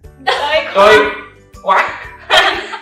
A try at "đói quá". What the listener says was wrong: No, it's not quack. It's Q-U-A. It's quá. Quá. Đói quá.